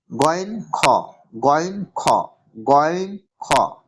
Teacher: হালাক বা কণ্ঠনালীর শেষ ভাগ থেকে উচ্চারিত হয়, অর্থাৎ মুখের দিক থেকে দেখতে গেলে গলা যেখানে শুরু হয়েছে, অর্থাৎ আইন হা যেখান থেকে উচ্চারিত হয় তার উপর থেকে উচ্চারিত হয় হালাক বা কণ্ঠনালীর শেষ ভাগ থেকে, এটা উচ্চারিত হয় গয়েন খ, গয়েন খ, গয়েন খ।